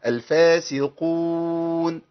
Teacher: القاف المضمومه ناخد بالنا، ما ينفعش تنقلب الى كاف